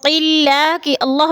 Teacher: اور قلہ کی اللہ باریک پڑھی جائے گی، اس لیے کہ اللہ سے پہلے لفظ قوف کے نیچے زیر ہے تو اللہ کو باریک کر کے پڑھیں گے